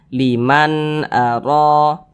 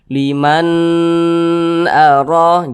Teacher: maka dibaca jelas tidak berdengung kita baca huruf nunnya dengan jelas dan tidak berdengung kita baca Liman Aro pendek saja karena tidak berdengung Jangan dibaca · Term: izhar halqi